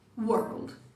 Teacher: o W é aquele som de U que rapidinho ele muda pra outra coisa. Então é tipo um U. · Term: U breve